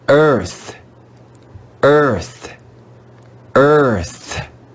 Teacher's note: here the digraph ea is going to be read with the schwa sound